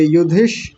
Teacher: पहले युधि को अलग कर लीजिए। युधि और इसी में यह मूर्धन्य श भी जुड़ा हुआ है।